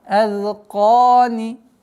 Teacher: Удлинение в размере 2 огласовок. Тянем. Фатха.